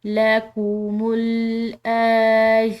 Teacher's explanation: دونوں جگہ پر کھڑی زبر ہے تو ہم نے دونوں جگہ پر کھنچاؤ دے کر پڑھنا ہے لَكُمُ الْآيَاتِ لَعَلَّكُمْ، مشدد لام ہے، اس پر دباؤ ڈالیں گے